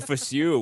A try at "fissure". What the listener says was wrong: it's pronounced Fisher. Yeah, Fisher, but you say fissure.